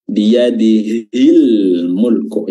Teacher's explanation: karena dia bertemu dengan huruf mim maka huruf lamnya ini tetap terbaca jelas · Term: alif lam alqamariah